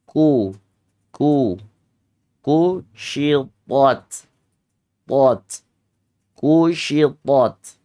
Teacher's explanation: istifal turun ku dan dibacanya hams · istifal lidahnya turun bukan dibaca istila, bukan dibaca naik lidahnya tapi istifal turun